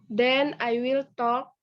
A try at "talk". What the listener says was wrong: Talk. L-nya nggak dibaca. L-nya nggak dibaca. Talk.